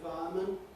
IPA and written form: ˈfaəmən (fireman)